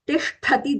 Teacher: Tisthati, the tha there is Mahaprana.